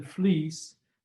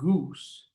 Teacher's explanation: e as in fleece does not require any rounding of the lips whereas oo in goose requires significant rounding